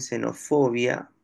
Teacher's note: esa X representa a este sonido fricativo alveolar sordo. O sea, esa grafía, esa letra X representa S, ¿no?